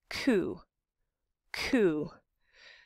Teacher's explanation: or the top of your head and it's Veer meaning that the back of your tongue is touching that squishy part at the back of the roof of your mouth it's where it gets soft the soft palette it's sometimes called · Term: stop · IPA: [ku]